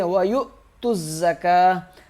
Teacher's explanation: کے ساتھ ملے گا، حمزہ پہ جھٹکا دیں گے، وَيُؤْتُوا الزَّكَاةَ، تا زا کے ساتھ سختی سے ملے گا